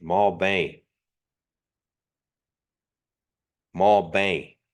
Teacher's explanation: that last part is nasalized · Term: nasalization